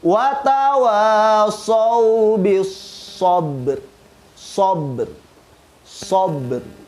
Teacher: Huruf ba itu punya sifat qalqalah. Sehingga ketika kita mengkolkolahkan huruf ba, maka makhraj ro yang ada di akhir ikut terdengar.